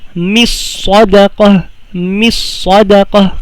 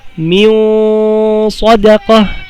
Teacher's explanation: Hindi siya masyadong malinaw. Hindi rin masyadong na-idgham. Nasa gitna lang at may gunna. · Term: ikhfa